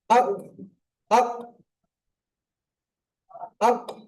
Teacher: মনে হবে যেন দুবার উচ্চারণ হচ্ছে, কিন্তু দুবার হবে না, একবারে উচ্চারণ হবে, ধাক্কা লেগে উচ্চারণ হবে। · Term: কলকলা